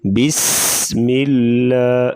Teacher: لفظ اللہ کا لام باریک پڑھیں گے